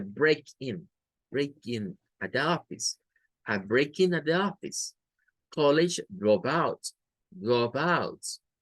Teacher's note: Significa que cuando las usamos como nombres, la fuerza recae en el verbo y no en la particle.